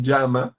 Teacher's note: uno dice yo yo y uno dice llama y suena igual en realidad